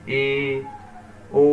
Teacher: ऐसे नहीं कहते वो समवृत्त है। अर्ध समवृत्त जिसके उच्चारण में मुख द्वार लगभग आधा बंद होता है।